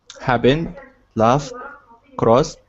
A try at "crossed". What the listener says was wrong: you know what's happening is the ending of the word, I don't even hear it.